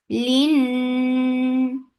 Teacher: So keep the sound in your nose for a longer time. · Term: gunna